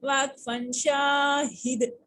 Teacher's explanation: واقفن کی صورت میں دال کے اوپر قلقلہ کریں گے